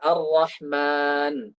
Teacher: Usahakan jangan masuk. Usahakan yang masuk ke gunnah itu cuma mimnya doang.